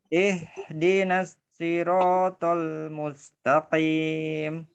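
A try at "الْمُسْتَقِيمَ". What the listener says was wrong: Tipiskan mus.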